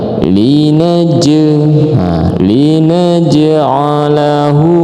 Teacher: Kemudian nah ini ada huruf qalqalah. Ini adalah qalqalah sugra ya karena dia ada di tengah